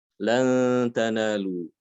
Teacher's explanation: Hanya karena setelahnya ada ta sehingga kita samarkan ya, nun sukunnya kita baca samar. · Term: ikhfa